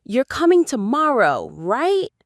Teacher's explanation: in the question, You're coming tomorrow, right? the stress is on tomorrow and right.